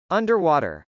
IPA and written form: ˈʌndɚw.ɔːtɚ (underwater)